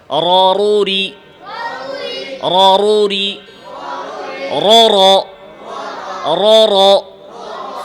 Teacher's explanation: ইনহিরাফের সাথে আওয়াজ দুই পাশ থেকে মধ্যখানে নিয়ে আসেন। জিহ্বার মধ্যখানে মানে জিহ্বার আগার মধ্যখানে।